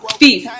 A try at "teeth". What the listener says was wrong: Oh, you said thief.